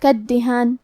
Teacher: دال پہ تشدید ہے، تو ہمیں 2 حرف کے برابر دال کو پڑھنا ہے، اور تشدید زیر کا ہے تو ہمیں زیر کو بھی ظاہر کرنا ہے۔